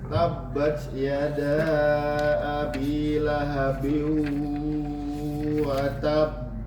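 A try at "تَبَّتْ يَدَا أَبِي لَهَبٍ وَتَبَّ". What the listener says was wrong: Jadi bukan pantulan bibir saja tapi suaranya juga yang dipantulkan. Yang dipantul bukan bibir tapi suara. Watab itu bibir.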